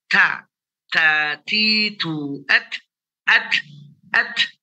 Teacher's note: Ada letupan nafas yang keluar dari mulut kita. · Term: hamas